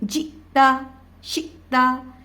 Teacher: ان تمام حروف پہ ہم کیونکہ حمزہ ساکن ہے, ہم حمزہ کو جھٹکا دے کر پڑھ رہے ہیں